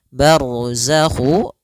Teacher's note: ro tebal karena ada huruf ro yang sukun didahului dengan fathah